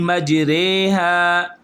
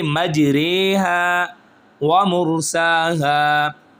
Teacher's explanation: زبر اور زیر کی درمیانی آواز کو نکالنا، اس کو امالہ کہتے ہیں